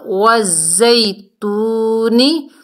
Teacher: وزیتونی، یہاں پر بھی واو ساکن سے پہلے پیش ہے، واو مدہ ہے، ایک الف کی مقدار کھینچ کر پڑھیں گے · زا جو ہے سختی اور سیٹی والا حروف ہے، سختی سے پڑھیں گے۔ اور یا ساکن سے پہلے زبر ہے، یا لین ہے، نرمی سے ادا کریں گے۔